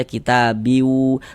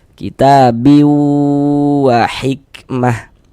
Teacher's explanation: di bagian biwunya itu suaranya itu kita tahan kita panjangkan sejenak. Nah, kira-kira sepanjang dua harakat. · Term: idgham ghunah